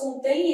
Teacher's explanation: Então vai ser um ditongo fonético decrescente.